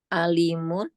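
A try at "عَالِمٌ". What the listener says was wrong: alimun. Panjang ya, alimun.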